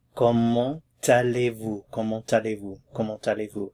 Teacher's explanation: When you say the word comment by itself, you do not pronounce the T at the end. However, when a word follows that begins with a vowel, there's liaison. So you're going to hear the T in this question.